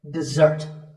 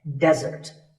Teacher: Notice that the first syllable is de and the second starts with a z sound. We stress the second syllable